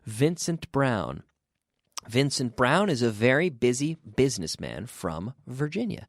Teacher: Virginia and if you can develop the ability to say to pronounce the V as an F and then activate the vocal cord the vocal cords you can you can properly pronounce this V